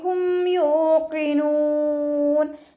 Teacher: ഇദ്ഹാർ ശഫവിയാണ്. മീമിനെ മണിക്കാതെ വ്യക്തമാക്കി ഉച്ചരിച്ചു കൊടുക്കുക